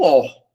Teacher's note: Tanto é que a palavra órgão, a sílaba tônica, é o or, não é o gã.